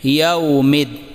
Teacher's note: یہاں پر یوم میں واولین ہے، اسے بغیر کھینچے نرمی سے ادا کریں